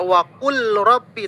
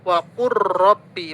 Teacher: Atau lam bertemu dengan ro, tidak waqul rabbi tapi langsung masuk waqur rabbi, masuk. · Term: idgham mutaqaribain